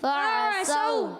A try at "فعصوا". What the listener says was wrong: صوت پڑھنا ہے، سین نہیں، فعصوا، اور عین کی ادائیگی بھی کلیئر، فعصوا